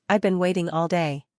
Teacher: The important words might be waiting and day. The smaller words, such as I've been and all, may sound quicker.